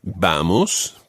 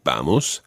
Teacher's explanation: Vamos, the stress on the first syllable, vamos